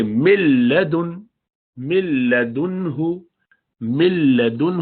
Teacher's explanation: اس میں نون کی کوئی آواز ہی نہیں ہے. مل مل، تو مل نہیں کریں گے، ناک سے آواز بالکل نہیں آنی چاہیے بلکہ سیدھا لام میں ملدنہ، ملدنہ.